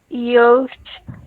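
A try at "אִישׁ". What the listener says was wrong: The thing about this font is that the yud is gigantic, but it's a yud. It's aleph, and then the chirik, the dot, and the yud is the e sound. So it's ish. It's because that yud is so gigantic that you thought maybe it was a cholam or a vav. But it's a yud. It's just a chirik ish.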